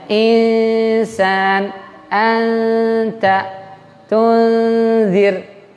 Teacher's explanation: Bunyi huruf N-nya itu samar, jadi nggak boleh jelas dan nggak boleh berubah, tapi harus samar. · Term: ikhfa